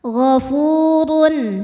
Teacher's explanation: dua harakat wallahu gofu Fu hukumnya Mad Thobi'i dahohiri sebab ada wau sukun didahului harakat dhamah cara baca fa-nya ini adalah panjang dua harakat ghaofurun huruf ro dibunyikan secara tafkhim karena berharakat dhamah tanwin maka